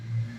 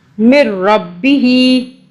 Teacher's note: खड़ा ज़ेर है, एक अलिफ के बराबर खींचा।